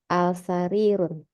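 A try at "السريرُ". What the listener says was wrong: As-sarirun, as-sarirun. Yang lain betul, tapi ada satu yang mengganjal. As-sarirun. Betul apa salah? Naam, betul. Ingat, di situ ada alif lam, berarti nggak boleh dibaca tanwin.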